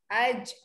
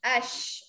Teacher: tengah-tengah lidah naik ke atas. Masa anda dengung tu naikkan lidah tu ke atas